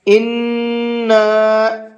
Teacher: نون کے اوپر تشدید ہے تو اس کے اندر بھی غنہ کر کے پڑھیں گے، اور ساتھ ساتھ چھوٹا مد بنا ہوا ہے تو اس کو 1 سے 3 الف کے برابر کھینچ کر کے بھی پڑھیں گے۔